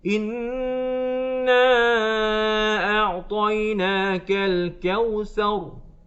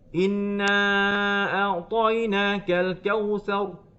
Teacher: sepatutnya ayat tersebut ada dengung, tapi kita baca tak dengung, tinggalkan dengung